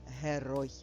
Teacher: Так, наголошений другий склад в слові герой. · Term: наголос